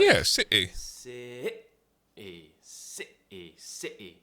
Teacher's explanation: So that's how we do the glottal T. It's tightening the throat, really tensing it, and cutting a sound out to replace the T.